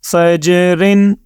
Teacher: جیم کے اوپر آپ نے قلقلہ کیا، کیونکہ جیم حروف قلقلہ میں شامل ہے۔ اب را کو ہم نے دو زیر کے ساتھ پڑھ لیا، اب ہم یہاں پہ وقف کرتے ہیں۔